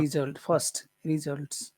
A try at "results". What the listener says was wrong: No, it's not on the first syllable. It's not results. It's results. Results. It's on the second syllable.